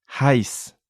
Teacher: we had a diphthong again consisting of an e and an i